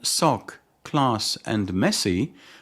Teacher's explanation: the consonants remain voiceless regardless of their position in a word